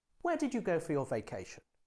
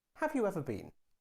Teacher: you're asking a question to find out new information in this case the question has a falling tone